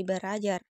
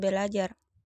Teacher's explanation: Contohnya, pada kata belajar, berasal dari gabungan prefiks ber dan bentuk dasar ajar, mestinya kalau tidak ada perubahan menjadi berajar. Namun, karena ada dua bunyi R, maka R yang pertama diperbedakan atau disimilasikan menjadi L sehingga menjadi kata belajar.